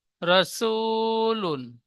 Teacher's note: ও সাকিনের ডান দিকে পেশ এসেছে, একে ও মাদ্দা বলে। ও মাদ্দা এক আলিফ পরিমাণ টান দিয়ে পড়তে হয়